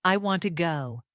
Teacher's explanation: the word to is often pronounced as ta or even t when spoken quickly.